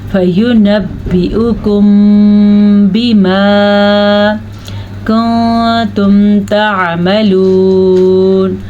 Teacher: میم ساکن کے بعد حرف با آ جائے تو یہاں پہ اخفاء شفوی کا قاعدہ ہوگا، یعنی کہ یہاں پہ ہونٹ بند ہو جائیں گے